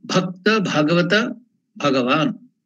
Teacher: All the three start with the Mahaprana, Bha.